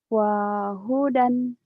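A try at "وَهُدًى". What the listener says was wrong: Gak ada yang panjang.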